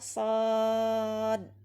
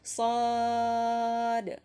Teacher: Karena dal ini bersifat qalqalah, maka harus kita penuhi juga qalqalahnya dengan memberikan pantulan ya. Jadi tidak cukup kita baca shad, tapi shad ya, kurang lebih seperti itu.